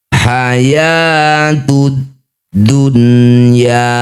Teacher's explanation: Setiap ada nun sukun bertemu ya atau wau di satu kata addunya ini disebut bacaan namanya mad ee izhar wajib ya atau izhar mutlaqo bunyi nun sukunnya wajib dibaca dengan jelas tidak usah dengung